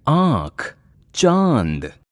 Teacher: इनको नाक और मुंह से बोला जाता है। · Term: अनुनासिक